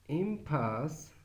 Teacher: the pa is aspirated in impasse with the primary stress on pass, because they're in impasse, primary stress is on pass, so it's aspirated there, but not compass, where pass has no stress.